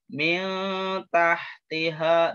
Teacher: Ini haknya ha kecil ya. Jadi ha di tengah-tengah tenggorokan, harus tengah-tengah tenggorokan.